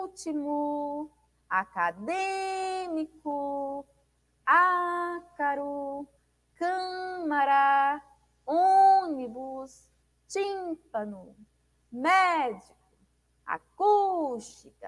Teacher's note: palavras em que a antepenúltima e vai dita com maior intensidade Ou seja a antepenúltima sílaba é a sílaba tônica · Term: proparoxítonas